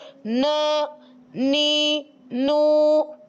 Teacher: یعنی انیاب سے لے کر ثنایا تک کے مقابل مسوڑوں سے لگتی ہے تو حرف نون ادا ہو جاتا ہے۔ ثنایا کے دانتوں کی جڑوں سے جب لگتی ہے نا تو حرف نون ادا ہو جاتا ہے۔